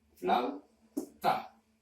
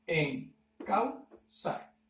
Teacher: El siguiente ejemplo nos pide un diptongo de la manera AU, una vocal abierta y una vocal cerrada. En este caso, la vocal abierta A y la vocal cerrada U.